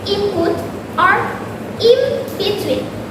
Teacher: In front of bilabial words like put or between, in is pronounced with an m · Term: assimilation